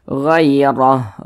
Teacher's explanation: Huruf ra yang memiliki tanda baca fathah atau harokat fathah maka dibaca tabkhim, dibaca tebal, sehingga pangkal lisan kita itu naik terangkat ke atas ketika kita mengucapkannya. Ditebalkan huruf ra-nya.